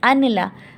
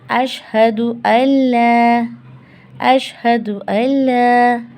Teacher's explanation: नून कट जाता है, अलिफ लाम से मिल जाता है, अशहदु अल्ला, अशहदु अल्ला, ये है अशहदु अल्ला।